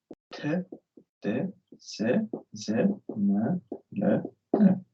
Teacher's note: 그래서 알비올러 사운드 먼저. 알비올러 사운드는 텅팁이랑 알비올러 리지에서 나는 소리.